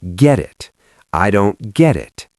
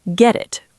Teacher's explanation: the T in get is between 2 vowel sounds when we link it to it, so it becomes a flap T. It sounds like a soft D.